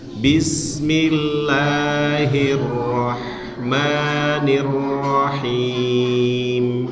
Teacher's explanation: basmalah itu bunyinya bis, ya, bis tipis. Bismillahirrahmanirrahim.